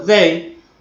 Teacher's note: Si yo digo they, simplemente con el fonema dental oclusivo, significa día. En cambio, si yo digo they con el fonema más interdental fricativo, estoy diciendo ellos.